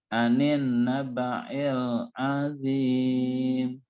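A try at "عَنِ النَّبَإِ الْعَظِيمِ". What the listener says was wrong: Anin, ninnya dilamain. Ilnya dibersihkan lagi, Pak. Anin nabail azim. Jadi pas ain, a, itu ditekan. Azim, a-nya tekan. Lalu nabai, yang ilnya dia biasa aja. Bersih, jangan ditekan.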